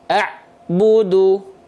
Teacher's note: antara bunyi Ain sukun dengan Bu itu tidak boleh ada Jedah Hening